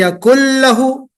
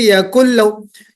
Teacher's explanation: तो नून की आवाज कंप्लीट मर्ज हो गई किसमें? लाम में। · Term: इदगाम